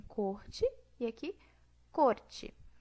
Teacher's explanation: A gente tem aqui a fricativa no dialeto mineiro e o TEP, que é o R fraco, no dialeto paulistano.